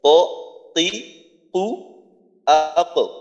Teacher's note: জিহ্বার গোড়াকে উপরের তালুর সঙ্গে লাগাই উচ্চারিত হয় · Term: কফ